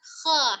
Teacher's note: kho-nya tidak monyong kho ya, tapi dibuka tetap kho, hanya angkat pangkal lidah